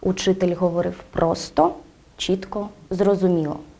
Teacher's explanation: інтонація при вимовленні однорідних членів речення є перелічувальною з однаковим тоном та з логічним наголосом на кожний з однорідних членів речення